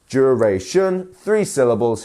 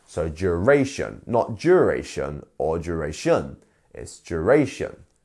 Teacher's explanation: Last but not least, we have duration, duration, 3 syllables here, and our stress is on the middle one here. So duration, not duration or duration, it's duration.